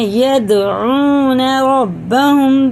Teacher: دال میں قلقلہ ہے، سخت پڑھیں گے